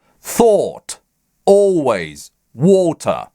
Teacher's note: а долгое О в received pronunciation произносится с поднятием языка выше, чем в русском О, как О, такое густое, дремучее, уже на У похожее О. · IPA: /ɔː/